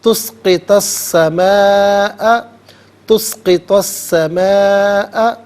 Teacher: تسقط السماء، تسقط السماء، سماء میں الف مدہ اوپر مد کی علامت، یہ مد متصل ہے، مد واجب بھی کہتے ہیں، مد لازم بھی کہتے ہیں۔ منیمم اس کو 3 سے 4 حرکات کی مقدار کھینچ کر پڑھنا ضروری ہے